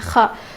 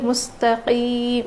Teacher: اس میں بالکل بھی کھردری آواز نہیں بلکہ صاف آواز آنی چاہیے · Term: قاف